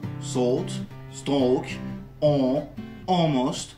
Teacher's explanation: la graphie A se prononcera O en provoquant la disparition du L